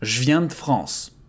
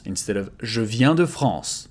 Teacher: we can devocalize the two E here